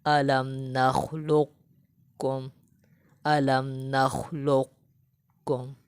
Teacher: قوف کو موٹا رکھتے ہوئے کاف کو باریک پڑھیں گے